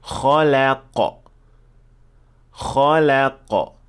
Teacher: So the kha and qaf are full mouth and the lam should be empty mouth. So you should switch from full to empty and then back to full.